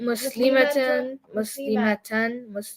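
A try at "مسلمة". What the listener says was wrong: See, the ma was too long?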